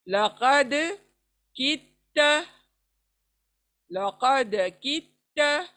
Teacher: दाल की आवाज को छोड़ देंगे, ता पे ता को मिला देंगे।